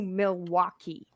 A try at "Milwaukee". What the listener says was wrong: Well, first of all, you're saying it wrong. First of all, it's pronounced Milwaukee. Milwaukee. Milwaukee. Milwaukee. You don't say the L. It's Milwaukee. We don't say the L. Milwaukee.